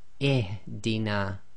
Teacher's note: The second letter is always going to be sakin, but the third letter carries a kasra, so the rule is we read the hamzatul wasl as if it's carrying a kasra.